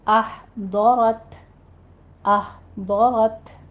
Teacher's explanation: احضرت، ہا ساکن ہے، وسط حلق سے ادا کیجیے اور ضاد کو پر پڑھنا ہے، آپ نے زبان کی کروٹ اوپر دانوں کے ساتھ لگائیے